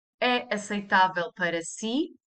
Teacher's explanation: So, if I would say, is it possible? I use the same word order as the sentence, it is possible, but I just raise the intonation in the end. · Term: raise your intonation